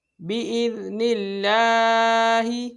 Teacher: عدوا لجبریل فإنه نزله على قلبك بإذن الله یہاں پر دیکھو یہ باریک پڑھا جائے گا، کیوں؟ کیونکہ اللہ عز و جل کے لام سے پہلے حرف کے نیچے زیر ہے، ٹھیک ہے، اس صورت میں باریک پڑھا جاتا ہے